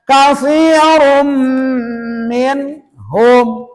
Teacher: jikalau ada tanwin patah domah kasrah ke depannya ada huruf mim namanya idgham bighunah maka gunahkan membacanya